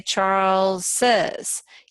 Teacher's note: Charles is one syllable but we say Charles says you have to add another syllable